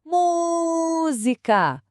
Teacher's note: O mu é a sílaba que a gente estica e nesse caso ela também tem o acento. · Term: sílaba tônica